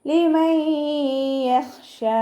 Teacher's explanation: ഇവിടെ നൂൻ സാക്കിനയ്ക്ക് ശേഷം ഇദാം ബിലാഗുനയുടെ അക്ഷരമായിട്ടുള്ള യാ വന്നു. നൂൻ സാക്കിനെ യായിലേക്ക് ലയിപ്പിച്ച് ഉന്ന കൊടുത്തിട്ട് ഉച്ചരിക്കുക. ഖ ഇസ്തിഅ്ലാന്റെ ലെറ്ററാണ്, തഫ്ഹീം ചെയ്യുക.